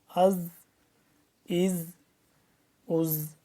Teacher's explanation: दानों के दरमियान जुबान की नोक ला केर पढ़ना है और जो जा है सीटी की सी आवाज से पढ़ना है जैसे सीन पढ़ते हैं ना सीटी की आवाज की तरह इसी